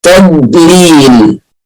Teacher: الضاد مفخمة وتقف عليها شوية، تضليل، ما تقوليش مثلا تضليل تقلقل الضاد، تضليل خطأ، تضليل.